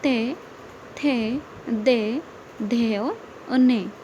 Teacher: आगे हम देखेंगे ते वर्ग। ते वर्ग कहाँ से बोला जाता है? दंत, इसका उच्चारण स्थान है दंत।